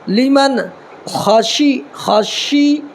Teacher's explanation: شین زیر شی، یہ بڑی شین ہے، اس کو زبان کا جو ہے بیچ والا حصہ تالو کے بیچ والے حصے میں لگانا ہے، اس سے شین بڑی شین ادا ہوگا